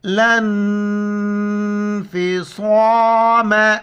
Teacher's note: لام کو نون کے ساتھ ملائیں گے، نون ساکن ہے، ناک میں آواز پیدا کریں گے ، بیچ میں ان دو الف کو نہیں پڑھیں گے، اور · موٹی الفاظ میں سے ہم موٹا کر کے پڑھیں گے، لانفصام، اس کو صاد پڑھنا ہے سین نہیں پڑھنا ہے